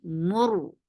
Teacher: keep mim light but ra heavy